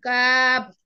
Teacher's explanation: 5 নম্বর মাখরাজ জিহ্বার গোড়া থেকে একটু আগে বাড়িয়ে তার বরাবর উপরে তালুর সঙ্গে লাগিয়ে